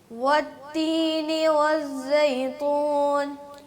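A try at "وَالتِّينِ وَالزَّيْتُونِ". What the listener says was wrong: خراب ہو گیا، تا ٹھیک نہیں ہوا آپ کا. والتین والزیتون.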